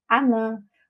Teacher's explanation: nós vamos ter a elisão do O e, na sequência, a crase, né, porque tem os dois fonemas idênticos.